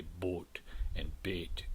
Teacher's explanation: In some areas of the country, the mid vowels, the A and O vowels, so the vowels of bait and boat, which for most varieties of English are diphthongal, A, O. In some varieties of American English, particularly in the North, they're pronounced as monophthong